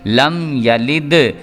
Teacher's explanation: اس کے بعد لم یلد، اس کو پڑھیں گے، دال جو ہے وہ حروف قلقلہ میں سے آ رہا ہے، یہ والا جو دال ہے یہ دال جو ہے اس کو حروف قلقلہ بھی پڑھیں گے، لیکن میم ساکن والا چونکہ ہم قانون پڑھ رہے ہیں اس لیے میم ساکن کے بعد یا آ رہا ہے تو یہاں پہ اظہار شفوی والا قانون جو ہے وہ لاگو کریں گے اور یہاں پہ غنہ نہیں کریں گے۔ لم یلد، اس کو لم یلد کر کے پڑھ دیں گے تو یہ خراب ہو جائے گا۔